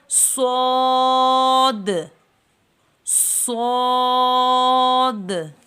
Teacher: صاد کی آواز موٹی ہے، سیٹی کی آواز آئے مگر موٹی آواز آئے،